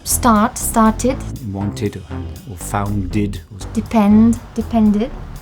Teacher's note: If the infinitive of the verb finishes with a T or D, then you pronounce it id.